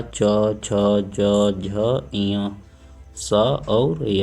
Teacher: जब हम लोग बोलते हैं तो जीभ हमारी तालु को स्पर्श करती है। तालु क्या होता है, मुख के भीतर की जो छत होती है तो उसके पिछले हिस्से को तालु कहते हैं। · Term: तालव्य ध्वनियाँ